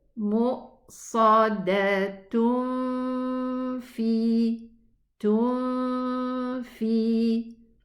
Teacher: So I need to go to the exit of the fa, hide the noon sukoon there, but with a ghunna. The noon is going to keep its ghunna heard. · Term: ikhfa